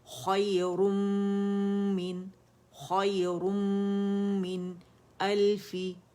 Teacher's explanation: اس میں نون کی آواز کو ہم ادا نہیں کریں گے